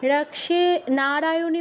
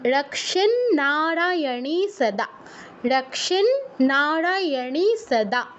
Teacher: রাক্ষে নারায়ণী সদা দুটো ন আছে কিন্তু নয় ন সংযুক্ত আছে রক্ষে নারায়ণী বললে একটা ন এর উচ্চারণ করা হলো